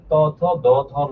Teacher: ত থ দ ধ এগুলো উচ্চারণ করলে জিহ্বাকে দাঁতে স্পর্শ করে, কেবল এইগুলোকে আমরা বলি দন্ত ধ্বনি।